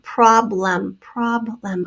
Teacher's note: hear the a short o sound in the first syllable and the second syllable becomes a schwa